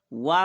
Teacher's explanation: दंत और ओष्ठ से वा का उच्चारण होता है, इसलिए इनको दंत ओष्ठ कहते हैं।